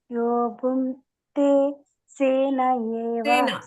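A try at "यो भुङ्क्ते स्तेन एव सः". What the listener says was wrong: ಅದು ಸೇನ ಅಲ್ಲ ಸ್ತೇನ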